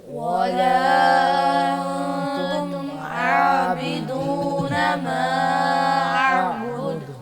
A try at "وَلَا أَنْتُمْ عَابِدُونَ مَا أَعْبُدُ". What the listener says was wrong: ولا پہ مد کر کے پڑھیں گے اس کو، اب بعض بچوں نے مد نہیں کی، دوبارہ سنیے ولا أنتم عابدون ما أعبد